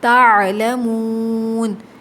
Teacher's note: واو ساکن سے پہلے اگر پیش آ جائے تو واو مدہ بن جاتا ہے، یہاں پر 2 کاؤنٹس کھینچیں گے